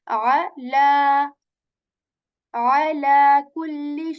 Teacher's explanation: I am stretching the sound of la here for two counts.